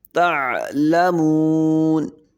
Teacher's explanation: عین کو حلق سے ادا کریں گے، تعلمون، واو پہ ہونٹ گول کریں گے، مون، کلا سوف تعلمون۔